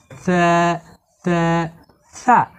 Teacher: এই সা হরফের মাখরাজ হলো জিহুবার আগা। সা হরফকে জিহুবার আগা এবং উপরের দুই দাঁতের আগা মিলিয়ে নরম করে পড়তে হয়